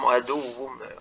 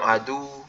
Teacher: Innahu lakum aduwwum, adu. Jadi wawunya benar ditekan untuk membedakan wawu tasydid dengan wawu sukun. Kalau wawu sukun jadinya panjang adu.